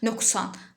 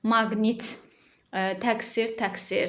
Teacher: q hərfi söz ortasına kar samitdən əvvəl gələrsə, k kimi, cingiltili samitdən əvvəl gələrsə, q kimi deyir